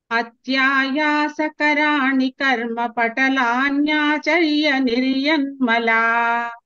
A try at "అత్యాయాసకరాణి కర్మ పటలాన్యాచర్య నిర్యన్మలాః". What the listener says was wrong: విసర్గ చెప్పండి. విసర్గ చెప్పినట్టు అనిపించలేదు నాకు ఎందుకో.